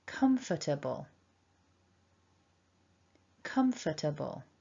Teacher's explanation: remember we need to stress the first syllable